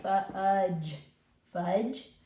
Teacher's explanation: You can't really hear that D it kind of blends in with the GE, so really it sounds more like fudge, fudge, but it is there, fudge, fudge, but it kind of blends together.